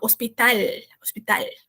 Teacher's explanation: tomar cuidado ali na questão de falar o L no final. Então, bota a língua no céu da boca.